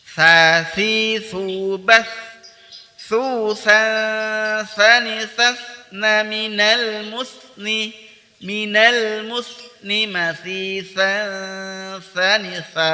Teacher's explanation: Jangan bas gitu, kalau langsung dipotong berarti tidak dialirkan. Tapi sa memiliki sifat ar-rakhawah, yaitu suara dialirkan.